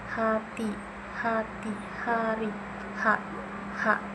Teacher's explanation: Yang ke-14 ada H, bentuk mulutnya itu pita suara terbuka, udara keluar dari tenggorokan tanpa hambatan. Bunyinya itu hembusan tanpa suara.